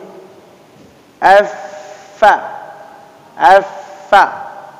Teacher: gigi seri atas bertemu dengan bibir yang basah.